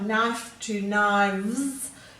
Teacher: if you hear it changing to a v like knife to knives you can feel your teeth go to your lips and you're forming the v